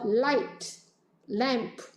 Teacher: 왜냐하면 우리가 수업에서 배우게 되겠지만 이 L 같은 경우에도 light L과 dark L이 있어요. light L은 alveolar ridge 부분에서 발음이 되는 것이고요.